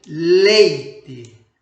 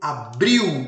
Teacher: Começamos com uma vogal e descemos para a semivogal, da vogal mais forte para a vogal mais fraca.